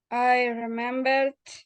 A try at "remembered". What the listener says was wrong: Remembered? No, remembered. Remembered with D.